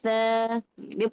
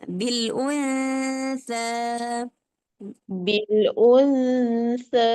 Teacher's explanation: dia tak lebih dengung, tak lebih sembunyi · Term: ikhfa ausad